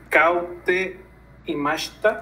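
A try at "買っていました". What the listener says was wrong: Katte imashita. Ka. Nada más la pronunciación es como tsu chiquita, no es u pronunciación, sino como brinca sonido anterior, sería este sonido. Por eso, ka te.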